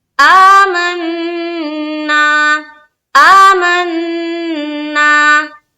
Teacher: आ में खड़ा जबर है, स्ट्रेच करेंगे एक अलिफ की मकदार के बकदर, जितना हम अलिफ मद्दा को खींचते हैं उतना ही हम खड़ा जबर को भी अदा करेंगे खींचते हुए।